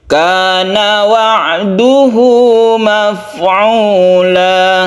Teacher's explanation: hak domir diapit oleh dua huruf hidup, maka haknya ini menjadi panjang satu alif